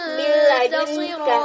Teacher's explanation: dibaca dengan tidak menggunakan suara yang berdengung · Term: idgham bila gunnah